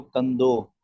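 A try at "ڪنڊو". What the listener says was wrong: कंदो। कंदो नहीं है, ये कंडो है। कंड ड ड डो, कंडो।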